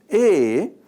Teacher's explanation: A, this is a short front vowel. It is pronounced briefly with the tongue positioned towards the front of the mouth.